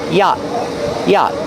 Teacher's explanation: The T is a stop T at the end after the vowel.